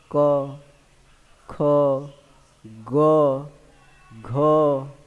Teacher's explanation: क वर्ग की बात करें तो ये आपका कंठ से होता है। किससे, आपका कंठ से।